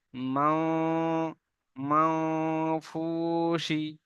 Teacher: নাকে থেকে একটা আওয়াজ আসবে, আর নাকে একটা কাঁপুনি আওয়াজ আসবে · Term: ইকফার গুন্না